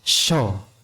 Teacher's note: Nah, huruf shin, minas syaito, shin makhrajnya pada lidah bagian tengah. Lidah bagian tengah posisinya di langit-langit bagian atas.